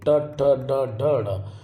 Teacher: जब यह हमारा जो तालव्य होता है मुख का ऊपर का हिस्सा उससे जीभ मुड़ के टकराती है तो वह मूर्धन्य होता है। · मूर्धन्य, मूर्धन्य क्या होगा? जब ये हमारा जो तालव्य होता है, मुख का ऊपर का हिस्सा, उससे जीभ मुड़ करके टकराती है तो वो मूर्धन्य होता है। ठीक है, टवर्ग, कभी देखो टवर, और तालव्य के भीतर के हिस्से से टकर ट ट, आप देखो ट ठ ड ढ ढ, तो ये हमारा कहलाता है मूर्धन्य।